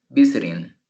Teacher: El acento está en la primera sílaba.